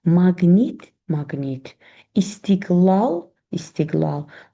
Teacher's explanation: q özündən sonra cingiltli samit gələrsə yenə q olduğu kimi qalır.